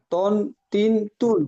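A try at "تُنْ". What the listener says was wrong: ত, ত একটু মোটা করে, তন তিন তুন,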